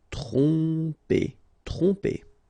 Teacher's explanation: Tromper, okay, same thing here, OM, so, and after that you get a consonant, so technically you will pronounce it like a nasal here, OM will go like on, tromper, tromper.